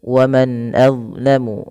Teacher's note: Ini kami salah memberikan tandanya, yaitu kita namakan di sini hukum tajwidnya berupa bacaan izhar halqi, yaitu dengan memperjelas bacaan suara nunnya, diperjelas dengan baik